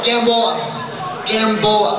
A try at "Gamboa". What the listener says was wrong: Gamboa lang yun. You are pronouncing your last name incorrectly. It's not Gam, it's Gom. Gom, open your mouth, use your articulators, say it again. Gom, Gom, Gom.